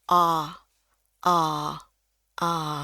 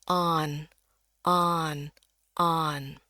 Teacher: Next. Nah, ini yang Inggris Amerika dia bukan dibaca on ya, tapi mulutnya kebuka lebar nih · Nah, ini yang Inggris Amerika, dia bukan dibaca on ya, tapi mulutnya kebuka lebar nih, kayak ini huruf A ini ya. Kebukanya tuh tapi masih bulat gitu ya mulutnya antara mau ngucapin A dengan O. Jadi saya suka bilang ini bunyi A tebal.